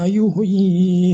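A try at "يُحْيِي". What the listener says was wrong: kalau H kecil itu yang mati jangan yuh ya, tapi yuh i. Yuh jangan yuh ya, yuh i. Yuh ya, jangan yuh ya, beda ya. Jangan yuh tapi yuh i. Kalau kan ini kan harus damah dulu ya. Tapi kalau H besar sama H kecil berbeda matinya ya.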